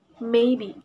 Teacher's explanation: the following acronyms first B for bilabial sounds the zones are these consonant sounds are produced by parting the Two Lips upper lip and lower lips together